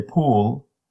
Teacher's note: the first sound is longer it means your muscle stayed working on it for a longer time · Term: tense